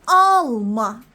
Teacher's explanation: İndi desən ki nəysə alma. Hə, vurğu əvvələ düşür.